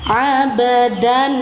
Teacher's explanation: Abdan ba sukun, qalqalah sura karena baknya berada di tengah kalimat. Abdan, nah pantulkan suara ba tanpa terjeda suara. Abdan fathah tanwin bertemu dengan huruf alif di lain kalimat, izhar halki, baca jelas.